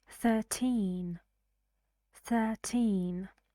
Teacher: for these numbers that end in teen the stress goes on the second syllable